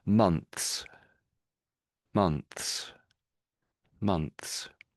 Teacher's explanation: But the S becomes a lot clearer. So the TH dies a little bit in sort of volume, but the S gets a bit louder.